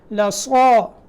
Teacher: صاد کو موٹا کریں اور الف بھی موٹا کریں